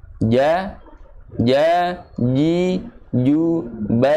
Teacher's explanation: artinya jangan sampai ada Hames yang keluar pada huruf Jim tersebut